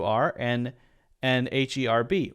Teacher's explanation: Those both don't have a pronounced H at the beginning.